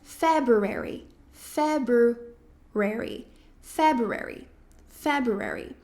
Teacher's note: muita gente acaba colocando essa sílaba tônica mais pro final, quando na verdade seria pro começo da palavra. Então, é a primeira sílaba.